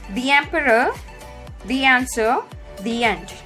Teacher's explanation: I have added little Y sound when I started pronouncing these words. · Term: short Y sound